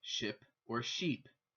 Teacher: there is no short I in Korean which causes some problems separating the words like ship or sheep